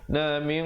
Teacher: ikhfa'nya bersifat isti'la kerana datang huruf qaf. Jadi kena baca tebal di situ.